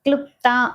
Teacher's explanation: క్లుప్త అనే పదంలో ఉండేది లా ఒత్తు కాదు అది అలు అనే అచ్చు అన్నమాట ఇది క్లు లాగా కాకుండా క్లుప్త అన్నట్లుగా అంతరంగంగా పలకాలి.